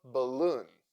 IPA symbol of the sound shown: ə